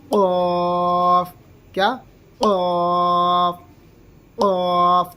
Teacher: तो ऊपर का हिस्सा नीचे हम मिलाएंगे, ठीक है, हलक में ऊपर का हिस्सा नीचे मिलाएंगे, तब इसको निकाल के पढ़ेंगे क़ाफ